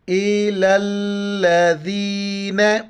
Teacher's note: لام کو لام کے ساتھ ملائیں گے، شد ملانے کے لیے آتا ہے، اور دال کے وقت زبان باہر نکالیں گے اور یا کے ساتھ ملائیں گے۔